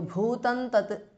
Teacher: an anuswara and the next word tat starts with ta so the anuswara changes to the anunasika or the nasal of the ta varga which is n